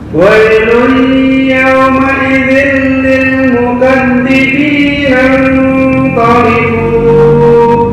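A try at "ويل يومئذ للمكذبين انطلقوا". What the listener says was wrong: Kepanjangan. Hanya 2 harokat. Mukadzibina taliqu titik.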